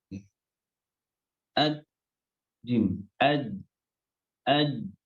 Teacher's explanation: Ad, jim, ad, ya, otomatis suaranya akan nggak bisa keluar karena tertutup, buntu. Makhrajnya nempel, ya, tengah lidah nempel di langit-langit, maka otomatis suaranya akan terhenti.